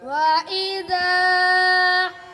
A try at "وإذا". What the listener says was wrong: ज़्यादा लंबा नहीं वइज़ा देखो बच्चों खड़ी ज़बर पर अब मद आई है। वइज़ा उधर अलिफ पर मद नहीं आई, खड़ी ज़बर पर आई है, क्यों?